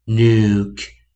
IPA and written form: nuk (nuke)